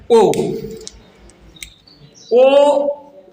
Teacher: ओ कंठ से निकलता है, कंठ और ओष्ठ से, दोनों से निकलता है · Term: कंठ ओष्ठ